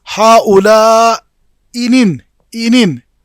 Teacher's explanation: جب ہم اسقاط بلا نقل کا قاعدہ استعمال کریں گے تو ایک حمزہ گر جائے گا